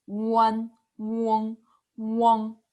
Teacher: And the purple part, they are all nasal sound. When you pronounce this, you can feel the vibration of your nose.